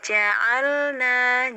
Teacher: lam itu punya sifat tawasud ya, nggak ngalir banget, nggak nahan banget suaranya. Jadi ja'alna lembut lamnya ya.